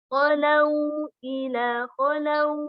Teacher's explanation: Khalau ila khalau ada wawu sukun sebelumnya huruf berharokat fathah, maka ini dinamakan wawu sukunnya dinamakan huruf lin ya. Dibacanya harus lembut dengan suara lembut. Khalau ila khalau ya, bukan w, bukan khalau, tapi khalau ke u.